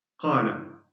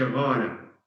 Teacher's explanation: So in Sudanese dialect, Kuwaiti dialect, they can't say qala, they say ghala